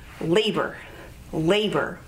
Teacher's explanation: labor has two syllables labor with the emphasis on the first syllable